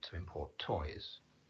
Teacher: because it's used as a verb to import toys the second syllable should be the one stress